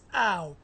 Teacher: The second sound is ah. The final sound is w. So, in combination, when we combine the second and final sound, we get ow. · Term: diphthongs